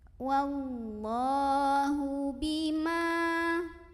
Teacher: Wallahu bima, ma mad tabi'i karena ada alif sebelumnya fathah, maka huruf mimnya kita panjangkan 2 harokat.